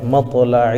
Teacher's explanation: تا جو ہے حروف قلقلہ میں سے ہیں اس لیے ان کے مخرج ٹکر کھا کر الگ ہو جاتے ہیں